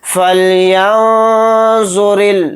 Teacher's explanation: نون کی آواز کو ناک میں چھپا کر اخفا کے ساتھ · چھپا کر اخفا کے ساتھ اس طرح سے پڑھیں گے، فَلْيَنظُرِ را کو یہاں پر باریک پڑھیں گے را پر زیر ہونے کی وجہ سے